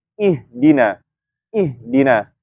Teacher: ha tempat keluarnya kan di pangkal tenggorokan atau di jakun kalau pada laki-laki maka kita menyempitkan makhrajnya kemudian rohanya kita sempurnakan